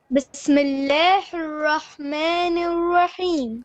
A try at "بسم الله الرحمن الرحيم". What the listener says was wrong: Again, don't say Bismillah, le, not imala. Bismillah, Bismillahir Rahmanir Rahim.